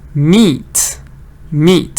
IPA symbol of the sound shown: iː